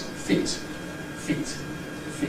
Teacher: the possible glottal reinforcement or replacement of the /t/ in ‘feet’ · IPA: fiˑt, fiˑʔt, fiˑʔ